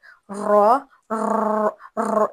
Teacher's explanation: र में हल्की थरथड़ाहट होती है जिसे हम तकरार कहते हैं यानी र में एक अलग सिफत पाई जाती है तकरार की सिफत र थड़ाहट से निकलता है र ये थड़थड़ाहट है।